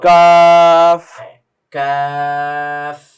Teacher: কাফ জিবার গোড়া থেকে একটু সামনে আসবে